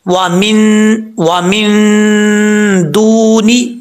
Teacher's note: واو ساکن سے پہلے پیش تو واو مدہ ہوتا ہے. ایک الف کی مقدار یہاں پہ لمبا کیا جائے گا اس کو. میم کے آگے الف ہے, یہ جو بیچ میں ہا آ رہی ہے یہ بھاری ساؤنڈ کے ساتھ پڑھا جائے گا کیونکہ اس کا تعلق اس حلق سے ہے جو حلق سینے کی طرف ہے, اس لیے اس کو بھاری ساؤنڈ کے ساتھ پڑھیں گے.